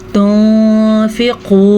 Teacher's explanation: ہم نون ساکن کی آواز کو چھپا کے غننے کے ساتھ پڑھیں گے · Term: اخفاء